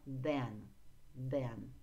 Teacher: Не забывайте про межзубное the